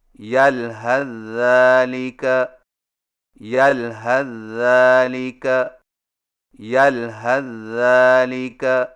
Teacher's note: سا کو ذال میں داخل کر کے ایک مشدد ذال سے پڑھیں